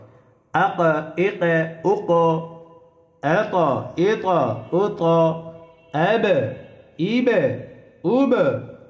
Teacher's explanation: এই 5 হরফে জজম হইলে কলকলা করিয়া অর্থাৎ প্রতিধ্বনি আওয়াজ দিয়ে পড়তে হয়